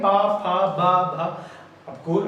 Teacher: इसको ओष्ठ, यानी कि होंठ से स्पर्श करें, होंठ हमारे दोनों टच होते हैं आपस में, तब ये बोला जाता है। इसलिए इनका उच्चारण स्थान ओष्ठ होता है, होंठ होता है, इसलिए इन्हें ओष्ठ वर्ण भी कहते हैं, ओष्ठ वर्ण भी कहते हैं।